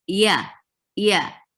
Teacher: you there is no zhu sound it's yeah yeah very soft your middle of your tongue is um lifting up towards the palate but it's not actually touching